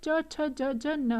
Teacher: ये चवर्ग जो है सारा, ये विद द हेल्प ऑफ तालु बोले जाते हैं। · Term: तालव्य